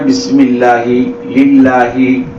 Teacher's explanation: அல்லாஹ்வுடைய வார்த்தைக்கு முன்னாடி சேர் இருந்துச்சுன்னு சொன்னா அந்த லாமை லேசா உச்சரிக்கணும்